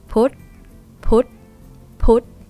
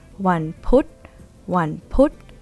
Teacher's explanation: dead syllable, short vowel, high tone because phaw phan is low class.